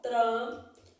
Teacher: eu falo o tran, o N você não fala, tem um dígrafo aqui, ó.